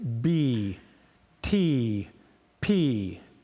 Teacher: especially with the P and the T, there's a puff of air that hits your hand